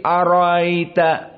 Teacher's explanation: maka jika ada dua Hamzah maka di tashil yang kedua maksudnya hamzahnya dibaca namun tidak Zahir atau ditahkik seperti hafz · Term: tashilul Hamzah